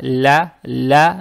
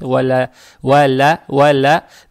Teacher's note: далее стоит буква ЛАМ с фатхой. Фатха приобретает оттенок Я